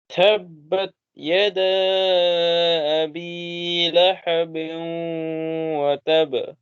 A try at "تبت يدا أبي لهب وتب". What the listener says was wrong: وتب वतब नहीं, क्योंकि इस पे शद्दा भी है। टाइटली ज्वाइन करना है, फिर कलकला करना है। वतब, कलकला भी। तब्बत यदा अबी लहब वतब।